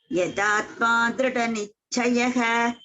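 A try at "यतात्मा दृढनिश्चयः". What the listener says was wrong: Nishchayaha. Sha. This sha is always there. Nishchayaha.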